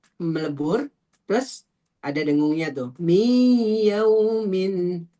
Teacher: kalau idgham bighunah melebur dengan dengung